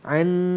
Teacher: nun mati bertemu dengan nun idgham ma'al gunnah, maka kita akan dengungkan dua harakat. Bahkan nampak nun kedua tu diberi tanda sabdu.